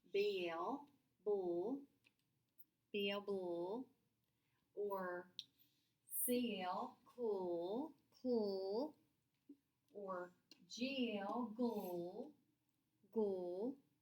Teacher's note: You can still hear both those sounds, but they just run together. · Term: blends